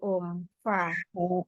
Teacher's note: Nah, kalau makhrajul huruf fa gimana tuh, Fa. Fa itu ujung gigi seri atas bertemu dengan bibir bawah bagian dalam